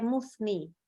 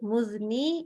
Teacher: Jadi kalau keluar udara langsung jadi sa. Kalau sa nggak keluar udara jadi za gitu. Bedanya di situ aja.